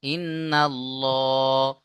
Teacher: মুখ গোল করে ল পড়তে হবে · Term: পুর করে